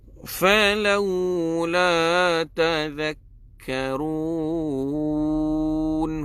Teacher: Nombor 1 huruf zal, hujung lidah perlu dikeluarkan.